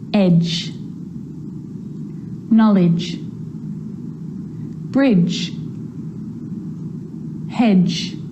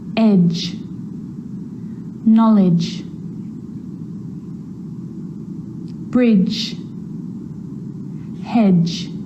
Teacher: the D and the G combined together produce the J consonant sound